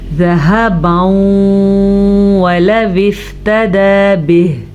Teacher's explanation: تنوین کے بعد یمون میں سے واو ہے تو ادغام بالغنہ کریں گے